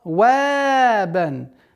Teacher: Мягкое произношение вау, оно мягкий звук, в размере двух огласовок, и при остановке аннулируется танвин, и причинная долгота в размере двух огласовок.